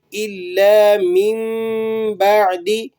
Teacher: یہاں پر اقلاب ہو رہا ہے، اقلاب کسے کہتے ہیں کہ نون ساکن کے بعد اگر با آ جائے فوراً سے تو وہ نون کی آواز جو ہے وہ میم سے بدل جاتی ہے